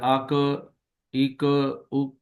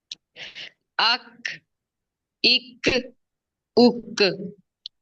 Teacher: اک اک اک، یہ أك قلقلہ ہے۔ جیسے تا پہ آواز بند ہو جاتی ہے، اسی طرح کاف پہ بھی آواز بند ہوگی۔ اک جی اک اک، ایسے أك إك أك نہیں، زیادہ زور نہیں لگانا۔